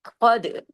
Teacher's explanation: قد تال پہ کلکلا کیجیے، قاف کو ہیوی، تال کو باریک